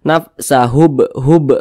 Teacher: huruf ba kalau dia sukun maka cara bacanya dipantulkan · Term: Qalqalah kecil